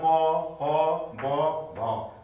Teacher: दुईटा ओठहरू एक आपसमा स्पर्श भएर प वर्गको उच्चारण हुन्छ।